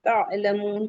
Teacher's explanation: تعلمون عین حلقی سے ہے، تعلمون کہیں گے، واو مدہ ہے 2 کاؤنٹ، مد العارض وقفی ہے 4 to 5 کاؤنٹ، elongate کریں گے.